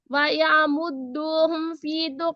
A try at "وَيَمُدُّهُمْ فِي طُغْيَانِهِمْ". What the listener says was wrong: نہیں, یا کے بعد الف نہیں ہے, صرف یا زبر یا ہے. وَيَمُدُّهُمْ فِي طُغْيَانِهِمْ.